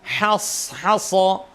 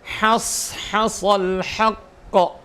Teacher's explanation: Ha, kalau ha berarti mulai dari sifat hamznya ha, rikhwahnya ha, kemudian makhrajnya ha pun juga harus jelas supaya beda dengan kha